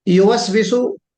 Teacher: वाऊ का मखरज ये है कि मुंह गोल हो जाए। मुंह का गोल होना ही उसका मखरज है। मुंह अगर गोल नहीं हुआ तो सही मानों में सही तरीके से वाऊ नहीं निकल सकता।